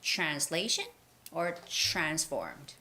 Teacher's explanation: there's the tr sound you have to make sure to make that ch sound